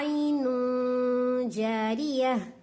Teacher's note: तनवीन या नून साकिन के बाद में जीम आ रहा है, तो अब मुझे क्या करना है, इख्फा करना है। क्यों, ये जीम जो है इख्फा के लेटर्स में है, हमें पढ़े थे ना इख्फा के जो है क़ायदे में।